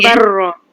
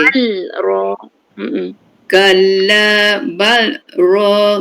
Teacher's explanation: Bal lam tu dia jelaskan dia punya makhraj dia. Kalla bal ra kita tak masuk ke tak idghamkan kepada ra